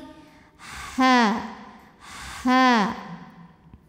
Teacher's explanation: ha keluarnya dari tenggorokan paling tengah ya, tenggorokan tengah. Halus, bersih, seperti tidak ada kotoran sama sekali.